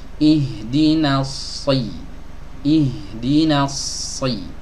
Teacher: yang benar ihdina, na tipis masuk ke shad baru tebal